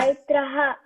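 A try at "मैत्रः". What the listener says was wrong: No, ha. Remove A from that. Maitraha. Maitra. See, when you say something wah, you know, like that. Vare wah.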